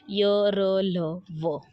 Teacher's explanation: इन 4 व्यंजनों का उच्चारण कंठ, दांत, जीभ, तालु आदि के सटाने से होता है, पर किसी अंग का पूर्ण स्पर्श नहीं होता। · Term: अंतस्तत व्यंजन